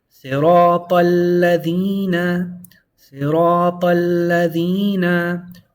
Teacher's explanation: You go straight from the ta to the lam. And there's a double lam, make sure to hold on to it.